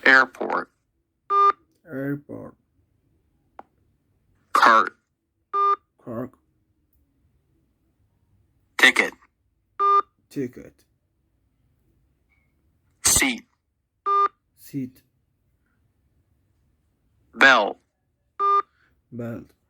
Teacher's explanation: The stop sounds at the end of words are not aspirated. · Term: final stop rule